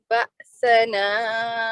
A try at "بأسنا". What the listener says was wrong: اس میں جو ہے نا جہاں بأسنا آپ نے بولا بأسنا تو یہاں جھٹکا سختی جو ہے بأسنا اب دوبارہ پڑھیں آپ سمجھیں کہ جہاں تک تلاوت کرنی ہے صرف بأسنا تک یہاں تک کریں اسٹیمنا بنا کے سانس کھینچ کے نا کریں گے دوبارہ